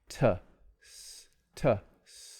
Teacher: The tongue tip touches the alveolar ridge, or maybe right behind it. It briefly blocks the airflow and then releases. So these are called stop sounds, or sometimes plosive sounds.